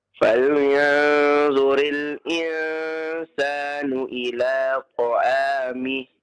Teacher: Ketika berhenti maka sukunkan ta'amih. Jangan dipanjangkan ya.